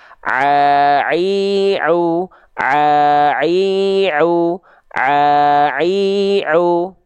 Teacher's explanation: huruf ain itu dilafalkan dari bagian tengah tenggorokan kita.